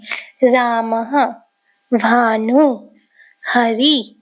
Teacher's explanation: विसर्ग का उच्चारण आधे हा की तरह होता है